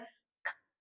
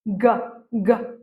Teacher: the k sound is much more subtle. It's like k, and unvoiced. The other one is g, g.